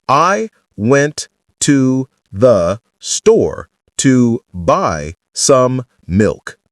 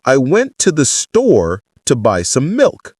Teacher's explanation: Notice how natives stress only the content words, store, milk, and zip through the function words like to, the, some. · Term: Content word emphasis